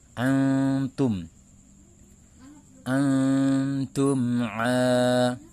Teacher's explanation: Maka cara membunyikannya, nun sukun dibaca samar disertai dengan dengung. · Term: ikhfa hakiki